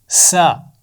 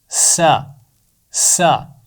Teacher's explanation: सीन की आवाज़ में भी सीटी होती है